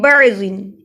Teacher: بعضن اس لیے ہم با کو عین سے ملا رہے ہیں کیونکہ عین پہ جزم ہے